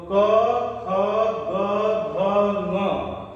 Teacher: इसका उच्चारण कंठ के आपस में स्पर्श से हो रहा है, इसलिए ये स्पर्शी हैं, वर्गीय हैं और वर्गीय व्यंजन ही स्पर्शी भी होते हैं। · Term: कंठ वर्ण